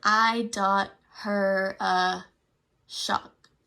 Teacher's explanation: tried to put the diacritics on the T and the K just because there wasn't an audible ending sound out of those two letters. It just, her mouth went there, but it didn't audibly come out.